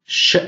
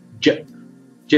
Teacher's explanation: sh is voiceless, j is voiced